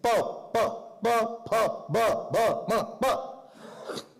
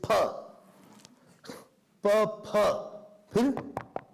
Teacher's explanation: only the lips are touching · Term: labials